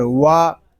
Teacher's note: واو کو جب ہم ادا کریں گے تو دونوں ہونٹوں کو گول کریں گے